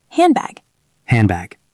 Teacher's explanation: Think about handbag. Hand ends in ND. Bag starts with B. Drop the D.